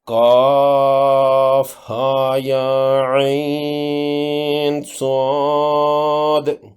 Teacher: ہاں اور یا کھڑی زبر کی وجہ سے دونوں جگہوں پر الف مدہ 2 حرکات کے برابر لمبا کرنا ہے · لین کے بعد سکون کی وجہ سے یہاں مد لازم لین 6 حرکات لمبی ہوگی